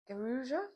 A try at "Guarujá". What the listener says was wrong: No, you pronounce the J.